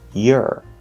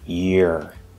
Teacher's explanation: your is actually being reduced to yur which is just the er vowel sound after the y consonant